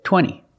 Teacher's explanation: You have NT in the middle, the T is silent.